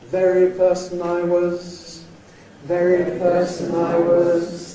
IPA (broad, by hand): ˈvery ºperson I was